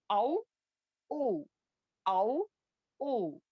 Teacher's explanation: نہ دانت کسی کی بھی حرکت نہیں ہوتی منہ کے خالی حصے سے ادا ہوتا ہے اسی لیے یہ اس کا مخرج کیا ہے الجوفیا بھی ہے واو جو ہے الجوفیا بھی ہے یعنی کہ جوف بھی ہے یہ ٹھیک ہے واو او او او او ٹھیک ہے.